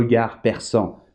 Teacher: Pues termina en D en francés, pero la D no se pronuncia.